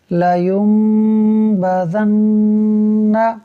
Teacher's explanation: ایک قاعدہ تو یہ ہوا، دوسرا قاعدہ لگ رہا ہے نون مشدد کا، کہ نون مشدد کی وجہ سے یہاں بھی غنہ ہوگا